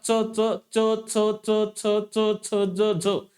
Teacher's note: दंत तालव्य, म्हणजे जिभेचा स्पर्श हा कठोर तालू लावतो